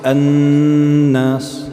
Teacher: You're extending the noon, right? You're making the noon longer, right? You're holding it.